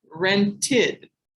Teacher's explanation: rented as an id sound at the end